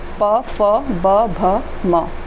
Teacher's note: ओष्ठ से प फ ब भ और म, ये ओष्ठ से बोलने वाले हैं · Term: ओष्ठ व्यंजन